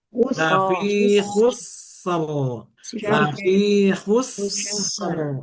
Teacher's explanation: sifat sinnya disempurnakan dulu, yaitu rokhawah